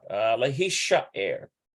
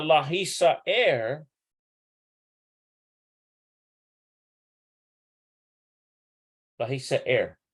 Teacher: So it's the sh sound rather than s sound.